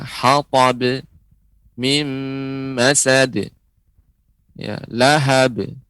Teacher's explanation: memperhatikan qalqalah yang sebagaimana sudah kita sebutkan pada pelajaran sebelumnya, ya, dia tidak menambahkan hamzah di akhirnya